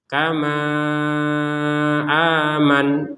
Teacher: kalau digabungkan antara panjangnya ma dengan hamzah maka panjangnya lima harakat